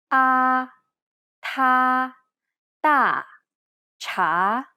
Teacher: this is almost identical to the a sound in the word father except the tongue is in more of a neutral position